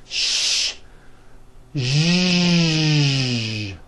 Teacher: first make a sh sound and then you add voicing like that now for some people this may take a little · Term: voiced sh sound